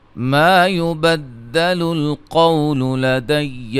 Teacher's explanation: ما يبدل القول لدي وما أنا بظلام للعبيد. الف مدہ، قاف کو موٹا، واو لین ہے، یا مد جائز ہے. انا کو الف جو ہے یہ ملانے کی صورت میں پڑھنے میں نہیں آئے گا.